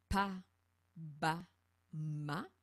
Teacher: Et ici, on avait vu, et on le pratique, que c'est la pression des lèvres qui retient l'air pour produire la consonne.